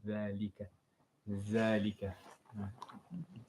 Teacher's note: The first one is ذال. So the tongue should come in between your teeth. Yes, in between, not behind.